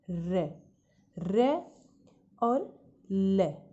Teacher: रे और ले का जब हम उच्चारण करते हैं तो जो हमारी जीवा है वो दांतों की जड़ों को छूती है। तो इसलिए रे और ले इनका उच्चारण स्थान हम कहेंगे दंत मूल।